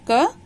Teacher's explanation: वर्ण है क। क का उच्चारण स्थान कंठ और उच्चारण नाम कंठ्य